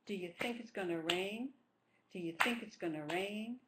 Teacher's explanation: two stresses think rain